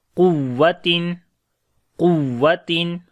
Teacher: We make nabar, like nabar means raise your voice on the waw for telling the listener that there is shadda sign on the waw